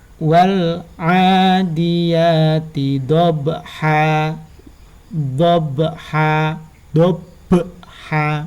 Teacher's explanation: Nah, itu ada be-nya, dobha. Jadi dipantulkan ba-nya.